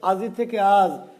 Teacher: ইকার লোপ পেয়েছে মাঝখান থেকে নয়, অন্ত থেকে